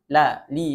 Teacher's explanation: Kemudian istifal ee rendah lidahnya dikarenakan tengah lidahnya tidak naik ke langit-langit. Jadi dia termasuk ke dalam huruf-huruf yang tipis.